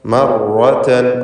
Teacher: തക്രീർ എന്ന ഒരടിസ്ഥാന സിഫത്ത് റാഇനുണ്ട്, എന്നാൽ അത് ഷദ്ദ് നൽകി ഉച്ചരിക്കുമ്പോഴാണ് കൂടുതൽ സൂക്ഷിക്കേണ്ടത്. മർ എന്നിങ്ങനെ എന്ന ആവർത്തനം വരരുത്, കുറേ റാകൾ ആവർത്തിച്ച് പറയേണ്ട. മർറതൻ ഒറ്റ റാ തഫ്ഖീമോടുകൂടി ഉച്ചരിക്കുക. മർറതൻ റാഇന് മാത്രമാണ് തഫ്ഖീം, മുമ്പിലുള്ള മീമിന് തഫ്ഖീമില്ല, ശേഷമുള്ള തായിനും തഫ്ഖീമില്ല, ഒക്കെ തർക്കീഖാണ്.